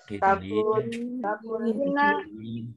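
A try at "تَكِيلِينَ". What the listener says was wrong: takil, kiki, bukan ku. Takilina, takilani.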